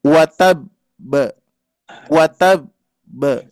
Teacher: karena ada dua huruf ba, maka jeda dulu, syiddah dulu baru pantulkan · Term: qalqalah